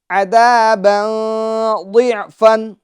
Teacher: ذال کو باریک کریں گے، اس کے اندر باریک کی خوبی پائی جاتی ہے، اور نرمی کے ساتھ ادا کریں گے، اس میں زا جیسی آواز پیدا نہ ہو. دوسری بات، با کی تنوین میں اخفا یعنی گناہ کریں گے، ٹھیک ہے، کیونکہ تنوین کے بعد حروف اخفا میں سے حرف ضاد آ رہا ہے.